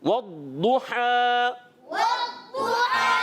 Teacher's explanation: اس پر بھی پیش ہے تو اس کی ادائیگی بھی ہونٹوں کی گولائی سے ہوگی. اور ہا کی ادائیگی کلیئر کریں گے حلق کے درمیان والے حصے سے